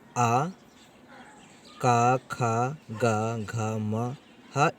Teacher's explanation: जो है इनका उच्चारण स्थान कंठ है